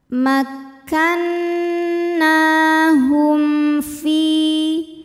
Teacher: Ada hukum izhar syafawi karena mim sukun menghadapi huruf selain mim dan ba, yaitu huruf fa. Cara bacanya mim sukun ini kita bunyikan dengan jelas, jadi bunyinya m ya, dan tidak ditahan